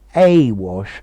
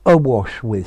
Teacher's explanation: Notice the difference in pronunciation. Awash, but here to be awash with, starting with a schwa sound